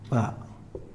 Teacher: ba itu tempatnya di 2 bibir